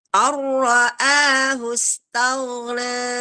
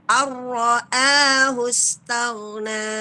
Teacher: Langsung ke ro-nya tebal